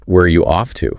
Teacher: ends on a lower tone because it's a real question, like you're looking for information